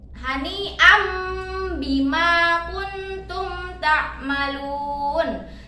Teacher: Ketika membacanya kita samarkan dengan mendengung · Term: bacaan iklab